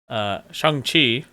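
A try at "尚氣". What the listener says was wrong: It's like that G almost disappears.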